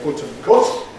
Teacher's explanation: And indeed again the spelling suggests this to you. In the north of England they still have the same vowel in popular speech.